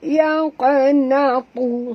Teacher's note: huruf qaf mati di tengah-tengah kalimah. Qalqalah surah